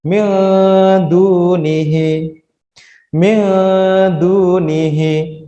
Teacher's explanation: Jadi dia ikhfa, samar, dua ketukan.